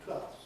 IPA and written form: twelfθs (twelfths)